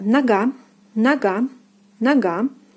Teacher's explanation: Next we have нога, нога, нога. The second syllable is stressed and O is pronounced as A.